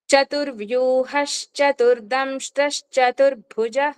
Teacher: చ ముందు వెచ్చిన విసర్గ ఇష్ కింద మారి అది ఒత్తుగా మనం కలిపి ప్రొనౌన్స్ చేసేస్తాం. చతుర్వ్యూహస్ చతుర్దంషస్ చతుర్భుజః అలాగే నెక్స్ట్ పాయింట్ తథ తథ ఈ రెండింట్ల ముందు వచ్చిన విసర్గ ఇస్ కింద పలుకుతాము.